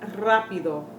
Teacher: the beginning of the word and gets that long roll or the Double R that gets a long roll